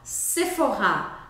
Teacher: Sephora, pois é, a marca Sephora é francesa. E a gente fala de novo com a sílaba forte no final